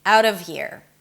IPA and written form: æʊt ʌv hir (out of here)